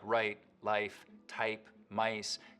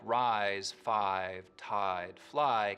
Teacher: the starting point of words like right life type mice can get raised too but words like rise five tide fly keep their full eye diphthong